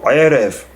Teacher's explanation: the first one will be Erev, the second one will be guttural, Erev, with the ayin